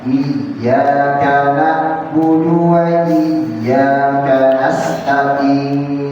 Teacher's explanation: dia membaca ain seharusnya di tengah tenggorokan menjadi di ujung, di pangkal tenggorokan seperti hamzah